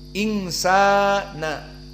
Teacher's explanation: Dan sa di sini ada alif, berarti mat tabi'i. Sa 2 harokat. Insana. Dan na tidak ada mat tabi'i.